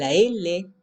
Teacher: al mismo tiempo el aire puede salir por el costado de la boca